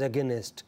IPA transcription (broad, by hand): əgenest